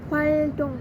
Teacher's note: bunyi L itu dilafalkan sebagai bunyi lateral, yaitu lidahnya menyentuh gusi secara terus-menerus.